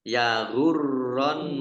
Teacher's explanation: La Baik, lam fathah alif mat tabi'i, ya ghurronnaka, roknya dibaca double, ada tasdidnya, ya kemudian nun tasdid dibaca gunnah atau mendengung, ditahan 2 harokat. Karena kalau tidak ditahan berarti tidak mendengung.